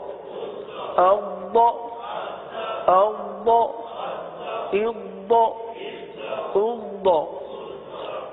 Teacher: یہاں پر قلقلہ نہیں ہوگا بلکہ آواز کو جمائیں گے، صحیح ہے، اور تھوڑی سی آواز جاری کریں گے